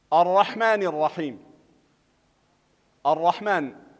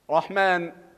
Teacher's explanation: دغه شانتا لام تعریف او پدې کی ادغام شمسی کیږي او دغه را چې کومه ده را مشدده مفتوحه ده دا به همیشه مونږ په تفخیم سره وایو